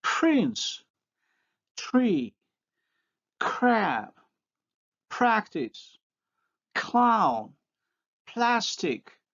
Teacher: the voiceless liquids have an exclusively unique context, they occur only after voiceless stops